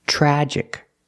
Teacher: The TR makes a ch sound like chicken. Plus the R together, chur, chur.